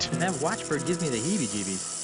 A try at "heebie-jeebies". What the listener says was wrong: That was a really weird pronunciation of heebie-jeebies. Put the emphasis on the heebie and not the jeebie.